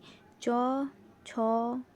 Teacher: উচ্চারণ করার সময় প্রথমে স্পর্শ ধ্বনি ও পরে উষ্ণ ধ্বনি মিশ্রণে উচ্চারিত হয় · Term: ঘৃষ্ট ব্যঞ্জন